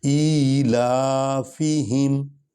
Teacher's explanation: یہ ہا جو ہے یہ سینے کی ہڈی سے نکلے گا